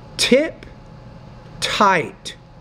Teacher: you need to pronounce that T with a little more air